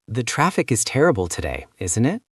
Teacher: Say the traffic is terrible today, but turn it into a tag question with a falling tone